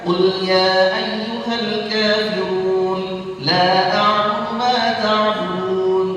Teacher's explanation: Maka dia boleh itu membaca mad jaiz munfasil tersebut dengan apa? Qasrul munfasil. Dibaca 2 harakat.